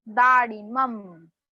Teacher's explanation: म के ऊपर थोड़ा स्ट्रेस देना है